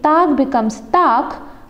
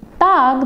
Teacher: if the coda is voiced, it has to change into a voiceless sound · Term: devoicing